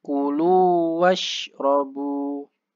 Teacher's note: Harusnya mengumpulkan ya kayak bibirnya itu apa? Moncong ke depan u ya. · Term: huruf u